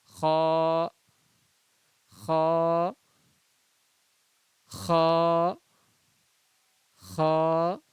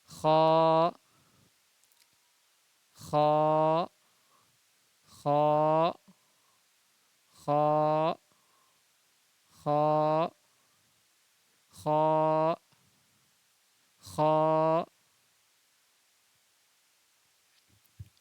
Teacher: حلق کا جو منہ کے طرف کا حصہ ہے اس سے نکلے گا خا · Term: خا کے مخرج